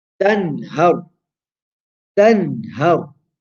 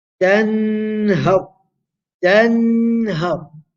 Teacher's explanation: A nun sākina which has appeared before haruf al-halqiyya, a letter of the throat, which is ha. So what do? We pronounce the noon short, sharp, and clear. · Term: izhar